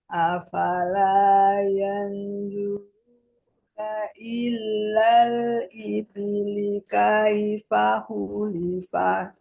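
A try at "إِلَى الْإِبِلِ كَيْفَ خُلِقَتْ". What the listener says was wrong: Ilal, ilal tidak ada tasdid. Ilal ibili kaifa khuliqat.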